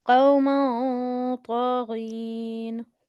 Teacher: Half noon and half in the nose.